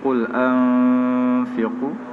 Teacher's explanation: Qul anfiqu ikhfa hakiki. Dibaca dengan dengung pada tanda dua harakat. Fiqu man asli mutlak.